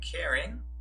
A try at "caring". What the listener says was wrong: You have to say caring as C-A-R-I-N-G, not carrying.